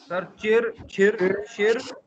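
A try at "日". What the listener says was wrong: और एंड वाले जो आर है ना, उसको इतना ज्यादा एग्जैजरेट ना करें ना।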